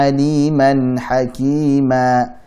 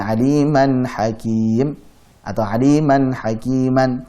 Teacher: Adapun saat fathatain, misalkan aliman hakima, saat fathatain kemudian waqaf di situ atau berhenti di situ, maka menjadi mad iwab, menjadi alif, dirubah. Yang tadinya suara n jadi alif, jadi panjang 2 harakat